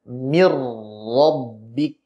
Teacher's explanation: Apabila huruf nun sukun bertemu dengan huruf ra, maka nun sukunnya idgham masuk ke dalam huruf ra sehingga menjadi satu makhraj yaitu huruf ra tanpa gunnah. Contoh min rabbik dibaca mir rabbik.